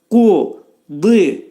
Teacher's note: Qaf hərfinin məxrəci dilin sonu və dilçəyin başlanğıcındadır. Qudi. Dot hərfinin məxrəci dilimiz sol tərəfdən 2 dişin arasına girərək quzi yox, qudi.